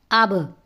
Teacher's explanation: جیسا زمین پہ گیند مارے نا تو فوراً اوپر اٹھ جاتی ہے، اسی طرح یہ حروف جب ادا کرتے ہیں تو جہاں سے ادا ہوتے ہیں، مثلا با ہونٹوں سے ادا ہوتا ہے، ہونٹ آپس میں مل کر کے فوراً جدا ہو جائیں گے